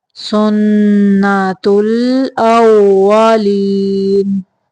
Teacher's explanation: وہ کو ادا کرتے ہوئے ہونٹوں کو گول کریں گے، دانتوں کا استعمال نہیں کریں گے۔